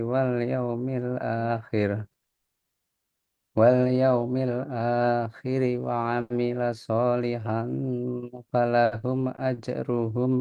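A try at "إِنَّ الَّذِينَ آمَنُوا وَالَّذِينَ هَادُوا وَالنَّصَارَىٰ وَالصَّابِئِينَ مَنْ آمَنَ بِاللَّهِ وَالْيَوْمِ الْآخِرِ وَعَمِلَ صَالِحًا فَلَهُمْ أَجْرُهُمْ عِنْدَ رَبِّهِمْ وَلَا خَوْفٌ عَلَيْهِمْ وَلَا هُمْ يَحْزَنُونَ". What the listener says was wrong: Mumtaz.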